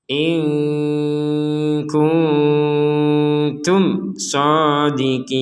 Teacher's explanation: nun mati bertemu kaf samar, nun mati bertemu ta samar, mim mati bertemu shad jelas. Jadi samar jelas.